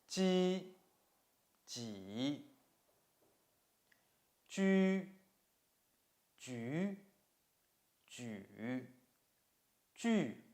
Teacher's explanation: The front part of the tongue touches the front section of the hard palate. To form obstruction, the air breaks through the obstruction first and then comes through the narrow opening with friction.